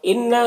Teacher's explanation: نون مشدد ہے، غنہ کے ساتھ میں پڑھیں گے